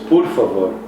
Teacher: for Portuguese, you pronounce por, you pronounce it with a U, so it's por favor.